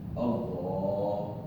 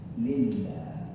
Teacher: the alif with fatha has thick pronunciation, but the lam with kasra has a thin pronunciation